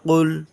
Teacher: یہ قاف ہے جو کہ اندر سے نکلتے ہیں حلق سے